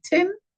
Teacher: The sound of the TH is eliminated. Instead of thin, they will say tin.